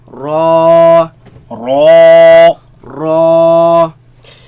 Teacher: Raise the back of the tongue. Make it heavy.